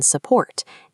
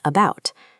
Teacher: these unstressed syllables naturally default to a relaxed uh sound. Mastering this lazy schwa helps you recognize and use these words fluently.